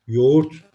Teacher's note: yoğurt yoğurt yine yumuşak ya film olduğu bir sözcük dikkat edelim ğ düşürürüz Bir önceki sesli harfi bir ses uzatırız yoğurt demiyoruz yoğurt diyoruz o da örümcek gibi kızım ölecek gibi